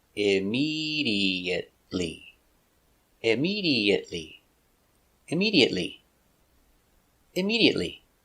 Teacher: immediately five syllables immediately stress on a second syllable immediately immediately immediately immediately he went to the hospital immediately after